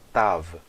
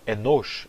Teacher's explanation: Em hebraico, principalmente, várias dessas letras mudaram para uma vogal classe O longa.